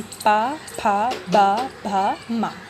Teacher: पा वर्ग को हमारा उच्चारण स्थान होता है ओष्ठ से। इसमें बोलते समय हमारे दोनों होठ आपस में मिल जाते हैं